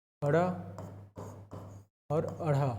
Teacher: उच्छिप्त व्यंजन उच्छिप्त व्यंजन उच्छिप्त व्यंजन वह व्यंजन होता है जिसके उच्चारण में जीभ पहले ऊपर उठकर मूर्धा को स्पर्श करे और फिर नीचे को आए